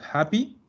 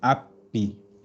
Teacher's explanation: Por eso, cuando los italianos cuando leen en inglés, en vez de decir happy, dicen happy, porque no pronuncian la H y pronuncian la doble, entonces dicen happy.